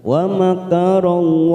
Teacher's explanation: Wa makarallah. Lam jalalah di sini kita baca tafkhim karena sebelumnya fathah